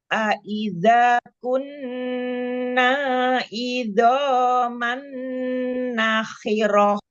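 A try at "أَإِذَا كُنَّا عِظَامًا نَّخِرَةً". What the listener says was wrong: Huruf ainnya jelaskan. Aidho, jangan kayak hamzah. Ulang ya. Nakhirah, jangan dipanjangkan naknya. Nakhirah.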